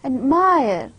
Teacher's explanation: Now, ad is not stressed, whereas the mire, it is more stressed syllable. So in word admire, mire is the stressed syllable.